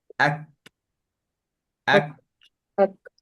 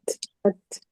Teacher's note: untuk kaf dan ta dia punya angin tak macam huruf fa, macam ha